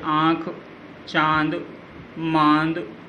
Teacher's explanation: जिन वर्णों के उच्चारण में हवा नाक और मुंह दोनों से ही बाहर निकलती है, उन्हें अनुनासिक कहा जाता है